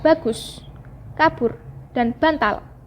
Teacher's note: Fonem B dilafalkan dengan cara mula-mula mengatupkan kedua belah bibir rapat-rapat. Lalu udara dari dalam diletupkan dengan tiba-tiba sehingga kedua buah bibir itu terlepas